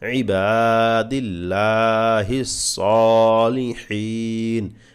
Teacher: বা তে এক আলিফ টান লামে এক আলিফ টান সদ এক আলিফ টান হা তে তিন আলিফ টান